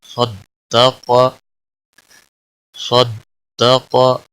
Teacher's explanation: صاد بھی موٹا پڑا جائے گا اور قاف بھی موٹا پڑا جائے گا